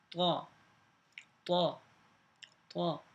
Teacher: زبان کی نوک، ثنایا علیہ، اوپر کے جو دو دانت ہیں ان کی جڑ